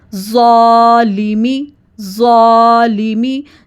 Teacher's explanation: زا کے ساتھ الف کی ساؤنڈ ہیوی ہوگی کیونکہ زا ہیوی ہے، اس کو نرمی سے اور ہیوی پڑھنا ہے، زا، ظالمی، ظالمی۔